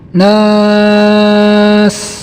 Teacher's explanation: Di sini ada nun yang bertasdid, maka hukumnya gunnah, didengungkan 2 harokat, boleh juga sampai 3 harokat